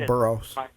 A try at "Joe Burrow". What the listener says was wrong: Burrow. There's no S.